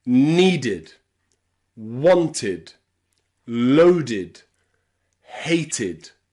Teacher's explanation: Again, remember that ed here is pronounced id with that short I sound.